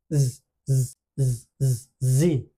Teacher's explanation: জি উচ্চারণের সময় জিহ্বার যে পিছনের অংশটা এটা উপরে উঠে আসবে